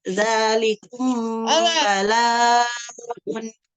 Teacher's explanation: Kemudian yang kedua adalah ikhfa syafawi. Ikhfa syafawi ialah mim sukun bertemu ba. Dibaca dengung juga 2 harokat